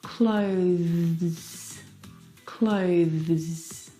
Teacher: Now the thing to remember that's really important is with that th sound you need to bring your teeth through your tongue through your teeth. Now the th sound is very very soft. It is definitely still there. It needs to sound different from the verb close.